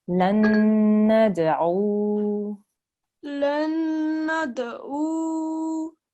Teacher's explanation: make sure again that you work on this ayn sound because it comes from the middle of the throat